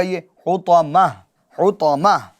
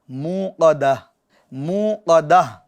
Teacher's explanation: جب آپ اس پر رکیں گے، ٹھہریں گے، وقف کریں گے تو اس گولتا کو کس سے بدلیں گے؟ ہا ساکن سے بدل دیں گے۔